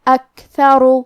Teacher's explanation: آخری میں را کا حکم ہے تفخیم، ہمیں حرف را کو موٹی آواز میں پڑھنا ہے